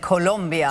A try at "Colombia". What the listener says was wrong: Colombia. It's an O, it's not a U. Colombia.